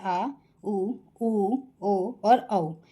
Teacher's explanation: पश्च स्वर जीभ का पिछला भाग प्रयोग में आता है, उसे पश्च स्वर कहते हैं